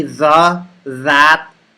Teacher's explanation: does not stick fully to the back of your front teeth your tongue sticks a little bit like it lightly touches the back of your front teeth and it vibrates as you make the sound your tongue and the back of your front teeth slightly vibrates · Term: th sound